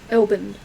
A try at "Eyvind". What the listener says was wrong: That's a D on the end, not a B.